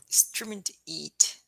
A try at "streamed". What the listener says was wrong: Yeah. Don't do the ed. Stream ed. Streamed. Streamed.